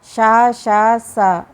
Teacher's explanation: सकार का तालु, मूर्धा तथा दंत स्थान में उच्चारण किया जाए तो क्रम से शा, शा, सा ऐसा उच्चारण होता है